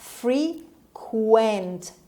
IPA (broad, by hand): ˈfriːkwənt